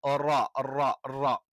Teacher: റ നാവിന്റെ തലയുടെ മുതുക് മേലെ മുൻപല്ലുകളുടെ ഊന് അല്ലെങ്കിൽ മുരടിൽ, റ, റ, റ. അപ്പൊ മേലെ മുൻപല്ലിന്റെ മുരടിലാണ് നമ്മൾ ടച്ച് ചെയ്യുന്നത്.